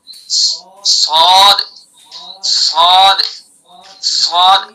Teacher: صاد کا مخرج زبان کی نوک اور ثنایا سفلا کنارہ اور کچھ اتصال ثنایا علیا سے